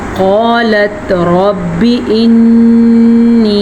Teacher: قاف کو موٹا پڑھنا ہے، الف مدہ کے ساتھ پڑھنا ہے